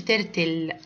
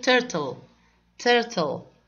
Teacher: Take care of letter L. بنفخم حرف ال L. يعني ما نقولش turtle.